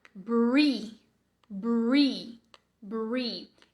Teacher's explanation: com o R enrolado, o R retroflexo, que a sua língua vai lá pro céu da boca